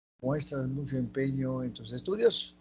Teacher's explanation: es oración interrogativa directa total o absoluta final es ascendente